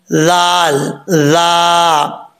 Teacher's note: ذال جو ہے بغیر سیٹی کے پڑھا جائے گا